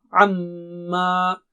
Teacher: میم پر تشدید ہے، غنہ ہوگا، ناک سے آواز